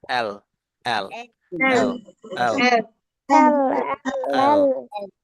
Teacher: এই জিহ্বার যে সামনের এটা মাথাটা, ঠিক সামনের উপরের যে দুটো দাঁত আছে তার গোড়ায় লাগবে